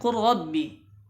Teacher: Ya, tidak dibaca qul rabbi, tapi dimasukkan ke ra-nya. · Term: idgham